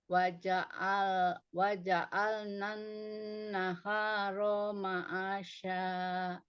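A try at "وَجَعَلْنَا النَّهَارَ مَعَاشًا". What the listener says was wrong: Nah, naharonya jangan ada jeda seperti ada hamzah. Waja'alnan naharo. Tapi naharo ma'asya. Naharo ma'asya. Nggak boleh ada jeda.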